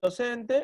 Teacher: en docente, la sílaba tónica no está en la última posición, sino está en la penúltima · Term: palabra grave